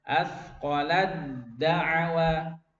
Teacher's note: jadi bacanya taknya dihapus ya, karena udah masuk ke dal. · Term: idgham